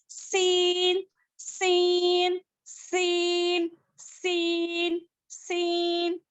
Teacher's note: It is pronounced when the tip of your tongue touches the roots of your 2 bottom teeth. यानी कि जुबान की नोक को नीचे के 2 दांतों के जड़ में लगाने से सीन अदा होता है।